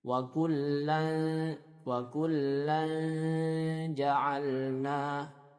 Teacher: maka tengah lidahnya diangkat sedikit mendekat kepada makhraj huruf jim. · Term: ikhfa